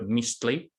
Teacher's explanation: And then that last word, mistli, that the TL is the tl sound is a lateral affricate. So those count as, that counts as a single consonant, but it's coming into contact with the Z.